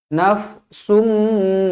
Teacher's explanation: bertemu dengan mim idgham maal ghunnah dengung dua harakat nafsumma Summa pastikan dua harakat Jangan kurang dari dua harakat nafsum